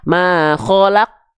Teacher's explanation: ketika makhraj qafnya nempel dia akan terhenti. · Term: sifat syiddah